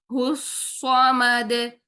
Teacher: हा की पेश को गोल होठों से अदा करेंगे और हा को बारीक रखेंगे